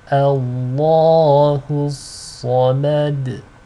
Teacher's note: Sad is a heavy letter. Lam is light. Dal is light with qalqala.